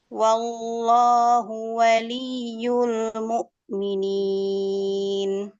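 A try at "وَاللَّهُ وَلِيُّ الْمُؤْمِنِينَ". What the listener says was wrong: Jadi langsung ke lafzul jalalah ya. Jangan ada gerakan bibir biar nggak kayak ada huruf wawu. Wallah, wallah, waw, waw. Nah, jadi langsung ke lam. Wallah, wal. Langsung ke lam.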